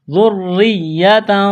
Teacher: ذال کو نرم کرنا ہے، را کے ساتھ ملانا ہے، تشدید ہے، را کو باریک کرنا ہے ، زیر ہے، را کو آگے یا کے ساتھ ملانا ہے،